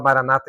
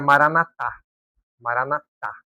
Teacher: a sílaba tônica acaba sendo a última ali